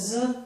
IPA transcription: z